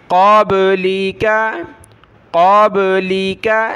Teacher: قاف کو موٹا کریں گے اور با پر قلقلہ کرنا ہے۔ قبلک، قبلک، لام زیر لی، کاف زبر کا، لی کا۔